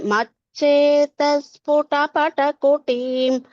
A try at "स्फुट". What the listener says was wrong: Tatra sphuta. Khu Mahaprana there should be clearer. Sphuta. Sphuta.